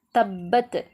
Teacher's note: இதில் வந்து பாவுக்கு சத்து வந்திருக்கு, நம்ம அதை நல்லா அழுத்தி ஓதணும்